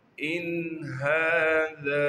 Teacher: ان ھذا، حمزہ کو نون سے ملائیں گے بغیر غننے کے، کیونکہ نون ساکن کے بعد حروف حلقی میں سے ہا آ گیا ہے، لہٰذا یہاں پر نون پر آواز کو ناک میں نہیں لے کر جائیں گے، یعنی یہاں پر غنہ نہیں کریں گے۔ ہا پر کڑا زبر ہونے کی وجہ سے ہا کو ایک الف کے مقدار کھینچیں گے